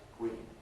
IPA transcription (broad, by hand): kwiːn